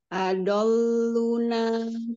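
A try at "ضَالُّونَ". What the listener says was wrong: Adol, lunya panjangin. Adoluna, panjang dua kali gitu.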